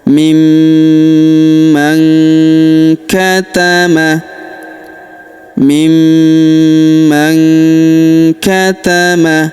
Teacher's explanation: huruf nun sukun bertemu huruf k maka nun sukunnya melebur ke huruf k. Kita baca dengung dan samar. Dengungnya kita tahan dua sampai 3 harakat.